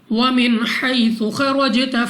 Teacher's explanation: نون ساکن کے بعد حا حروف حلقی میں سے ہے، اظہار کا قاعدہ ہے، غنہ نہیں کرنا یہاں پہ۔ یا ساکن سے پہلے زبر یا لین بغیر کھینچے بغیر جھٹکا دیے پڑھیں گے۔ · خوا مستعلیہ میں سے ہے، را پر زبر ہے، دونوں کو موٹا پڑھنا ہے، یعنی منہ اور آواز کو کھول کر۔ جیم پر قلقلہ کریں، یعنی جب ہم ادا کریں گے تو ہماری آواز ہمیں واپس سنائی دے گی۔ اس کے بعد دوبارہ جیم ہے، قلقلہ کرنا ہے۔